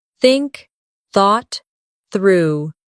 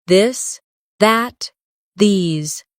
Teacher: Put your tongue between your teeth and push air out for think. For this, your tongue touches the same position but with your voice turned on. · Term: the th sound